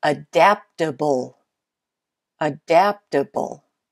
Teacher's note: adaptable has the second syllable as the most stressed